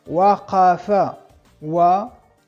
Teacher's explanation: la qaf de la garganta, qaf, no es de bilabial, pero de la garganta